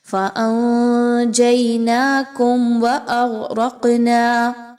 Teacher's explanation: یعنی واو کو بہت جلدی سے آگے پڑھنا ہے، میم ساکن پر رکنا نہیں ہے۔ وَأَغْرَقْنَا، اس میں دیکھیے تو غین، را اور قاف کی تینوں جو حروف ہیں یہ موٹے پڑھے جائیں گے۔ · ناکم، میم ساکن کے بعد واو کا حرف آ رہا ہے، اظہار شفوی کیا جائے گا، یعنی یہاں پر میم ساکن کے بعد آپ نے غنّہ نہیں کرنا